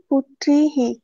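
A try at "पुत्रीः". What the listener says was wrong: পুত্রীম পুত্রীः, জননী জননী। টেনে টেনে উচ্চারণ করতে হবে, দন্তে নয় দীর্ঘী আছে। সংস্কৃতে কিন্তু এই দীর্ঘস্বর হ্রস্বস্বরের মাহাত্ম্য রয়েছে, কিন্তু দীর্ঘস্বরে দীর্ঘ উচ্চারণ না করলে, হ্রস্বস্বরে হস্য উচ্চারণ না করলে তুমি শ্লোক পাঠও ঠিকঠাক ভাবে করতে পারবে না।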